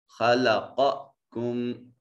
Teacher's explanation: خا صفت استعلاء، قوف صفت استعلاء، دونوں کو مفخم ادا کریں گے۔